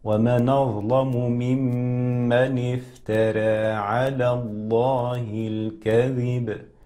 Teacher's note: الفاء تخرج من باطن الشفة السفلى مع أطراف الثنايا العليا